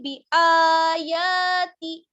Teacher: جتنا آ کو کھینچیں گے اتنا ہی یا کو کھینچیں گے، دونوں پر کھڑا زبر ہے